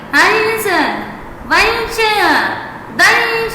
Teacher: इस वर्ण के उच्चारण में प्राणवायु जब नासिका से बाहर निकलती है तब अनुस्वार का उच्चारण होता है, जैसे हंस, वंशः, दंशः आदि।